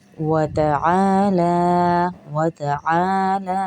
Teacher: عین کو بھی کھینچیں گے کیونکہ الف مدہ ہے ساتھ میں، اور لام کو بھی کھینچیں گے کیونکہ کھڑا زبر ہے